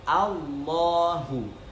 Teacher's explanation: Jadi hamzah di sini tipis, kemudian lamnya itu tafkhim menjadi Allahu. Nah, A-nya tipis, lafdzul jalalah bagian lam itu harus ditebalkan.